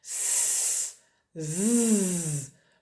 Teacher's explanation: Sur le S, il n'y a pas de voix, c'est ce qu'on appelle une consonne sourde, et sur le Z, il y a de la voix, c'est-à-dire une mise en vibration de mes cordes vocales.